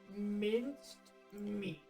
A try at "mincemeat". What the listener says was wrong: You're a letter off. Minced meat. Mincemeat.